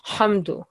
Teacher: this ha is bit thicker coming from the throat